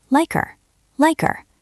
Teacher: The K at the end of like jumps onto the ER of her.